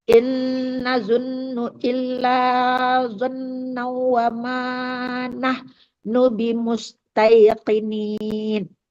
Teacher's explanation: Qaf tebal itu qaf besar ya.